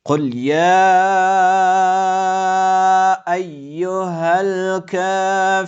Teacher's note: های دو چشم آمده که از آخرین قسمت حلق تلفظ می‌شود